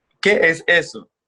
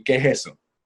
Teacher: Then you just took out the es in the middle.